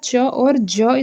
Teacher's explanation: च और ज स्पर्श संघर्षी होता है। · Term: स्पर्श संघर्षी व्यंजन